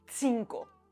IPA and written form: 'tsiŋ.ko (cinq)